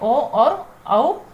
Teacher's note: ओ और औ का उच्चारण स्थान कंठ ओष्ठ्य है, अतः ये कंठोष्ठ्य वर्ण है।